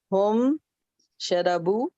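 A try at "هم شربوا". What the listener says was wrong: Sharibu. Ra has a kasra. Sharibu.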